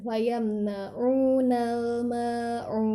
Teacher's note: Ain mulutnya bagian lebih majukan dibulatkan atau di monyong kan